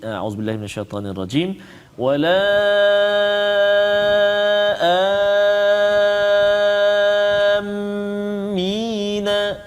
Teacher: 6 harakat dan juga ada sabdu atas mim tu 2 harakat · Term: mad lazim kalimi muthaqqal